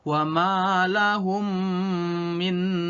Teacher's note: hukum bacaan mim mati apabila bertemu dengan huruf mim dibaca masuk atau libur ke huruf depannya disertai dengan berdengung contohnya KMA Allahumma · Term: Idgham Mutamatsilain, idgham mutamassilain